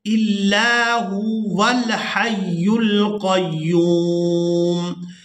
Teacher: अगर हम यहाँ पर वक़फ़ करेंगे तो फिर हमने हमज़ा को लाम के साथ मिलाना है, हमज़ा लाम ज़बर अल। लेकिन अगर हम यहाँ पर वक़फ़ नहीं करते और इस लफ्ज़ को पढ़ते हैं इल्ला हुआ तो फिर अल को नहीं पढ़ेंगे, फिर हम वाव को लाम के साथ मिलाएंगे